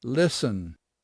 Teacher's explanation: É o caso do listen, por exemplo, onde a gente não diz o T.